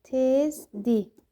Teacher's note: İsmi artırıla, sifət artırıla, saya, əvəzliyə, zərfi artırılanda tələffüz zamanı D formasında qalır. R düşür.